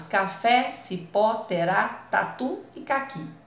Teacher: Em todas essas palavras, a última sílaba é a sílaba tônica. Então, é isso que elas têm em comum, mesmo quando tem acento ou quando não tem.